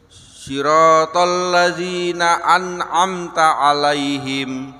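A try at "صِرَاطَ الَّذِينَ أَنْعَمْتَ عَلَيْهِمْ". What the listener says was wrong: Ya, ain yang kedua di alaihim kurang sedikit.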